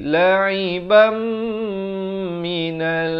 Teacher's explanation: Asalnya la'iban, tapi bila datang mim jadi la'ibam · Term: idgham bi gunnah